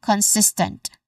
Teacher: so we get consistent sis as a stress syllable.